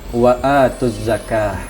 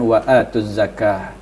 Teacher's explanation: begitu ketemu dengan huruf Zai atau ada tasydid langsung dibunyikan waatuz zakah dan eh cara bacanya lam dihilangkan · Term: alif lam asyamsiyah